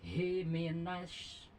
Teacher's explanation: Hi minasy itu shin besar memiliki sifat tapasyi ya, jadi udara keluar.